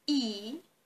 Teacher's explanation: And while pronouncing, for example, the sound E, you might notice that the lower jaw is close to the upper jaw, so it implies that the degree of closeness is at its highest